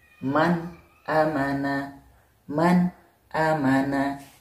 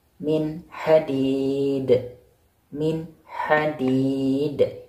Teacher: memisahkan bunyi nun sukun atau tanwin dengan huruf idhar, atau huruf tenggorokan. Jadi nampak jelas yang dibacanya.